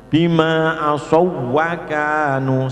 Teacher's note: Bima asawwakanu itu ada wawu tapi bukan huruf mat, tapi huruf lin. Bertemu wawu tetap harus diidghamkan dan jangan sampai dibaca dengung karena tidak nun. Bima asawwakanu seperti wawu dibaca tasdid.